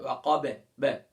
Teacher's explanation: اس کو کہتے ہیں قلقلہ، یعنی ایکو کا پیدا ہونا، آواز کا لوٹتے ہوئے محسوس ہونا